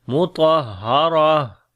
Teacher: آخر میں ہا کی آواز آئے گی، صفت ہمس ہوگی، سانس جاری رہے گا